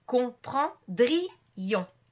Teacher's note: le I et le on vont être séparés